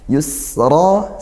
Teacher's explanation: sin sukun didesiskan, ngalir suaranya dan juga ngalir nafasnya. Yusra, ra-nya tebal dan juga panjang satu alif, mat tabi'i karena dia bertemu alif ya.